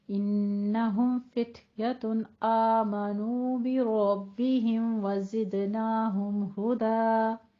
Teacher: بربہم وزدناہم دونوں جگہوں پہ میم ساکن آ رہا ہے، اظہار شفی کرنا ہے، اس کو لمبا نہیں کھینچنا · انہم غنہ واجبہ کریں گے، ہم میں اظہار شفی، فتیتن میں تاپ حمز کریں گے ساکن ہے، اور تن میں اظہار حلقی کریں گے کیونکہ آگے حمزہ حروف حلقی میں سے آ رہا ہے